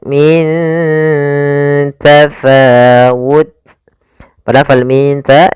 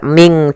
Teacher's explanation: Kemudian min tafawal min ta di sini ada bacaan ikhfa yaitu adanya nun sukun bertemu dengan huruf ta. Cara membacanya nunnya disamarkan ke huruf ta.